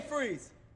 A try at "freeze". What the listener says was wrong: You don't move your top lip that much. I move my top lip so it doesn't come out stern. Freeze. Freeze.